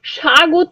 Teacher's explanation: এই যে একটা শ্রুতি ধ্বনি, শ্রুতি শোনা যাচ্ছে, ওয়া ধ্বনি একটা শোনা যাচ্ছে, যে ধ্বনিটা আমরা আলাদা করে উচ্চারণ করছি না, কিন্তু একটা ওয়া আসছে। স্বাগত আমরা যখন বলছি আলাদা করে আমরা সোয়াগত বলছি না, কিন্তু এই ওয়া ধ্বনিটা শ্রুতি ধ্বনি হিসেবে থেকে যাচ্ছে, বা অর্ধ স্বর হিসেবে যে এসে যুক্ত হচ্ছে, অর্ধেক একটা ধ্বনি হিসেবে এসে উচ্চারিত হচ্ছে।